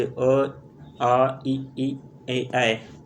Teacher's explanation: जिन स्वरों के उच्चारण में ओठ वृत्तमुखी या गोलाकार नहीं होते हैं अवृत मुखी स्वर कहलाते हैं